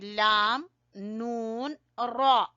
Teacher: जबान का किनारा ऊपर वाले दांतों की जड़ से लगेगा, जबान का किनारा ऊपर वाले दांतों की जड़ से यानी मसूड़ों से। जब जबान का किनारा टकराएगा तो वहां से लाम, नून और रॉ अदा होंगे।